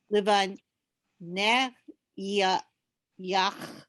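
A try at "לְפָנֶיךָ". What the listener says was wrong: No, you ignore that yud. Livanecha. Cha. Livanecha.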